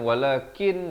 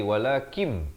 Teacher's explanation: bukan walakin jadi walakim terus masuk ke dalam mim